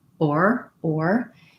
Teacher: the or in american english we have that tight r sound we go from the o shape to the er shape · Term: or diphthong